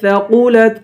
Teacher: قاف کو پر پڑھیں گے